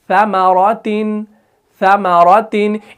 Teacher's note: जुबान का जो सिर्रा रहता है वो सनाया उलिया के किनारों से लगता है, तब जाके आपको लगता है कि भाई ये फिसल रहा है।